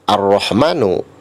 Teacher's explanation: huruf lamnya tidak dibaca, seolah-olah hilang, dan itu termasuk alif lam syamsiah. Ar-Rahmanu, Ar-Rahimu, itu termasuk contoh alif lam syamsiah.